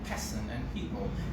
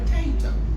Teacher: the same pe which is aspirated in person and people is not aspirated in the potato. So the pe there, or the first syllable, is not stressed.